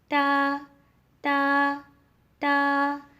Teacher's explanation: تا کی ادائیگی میں زبان کی نوک کو سامنے والے اوپر والے 2 دانتوں کی جڑ سے لگا کر باریک آواز میں پڑھنا ہے۔